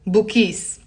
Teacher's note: instead of saying Abu you can drop the ah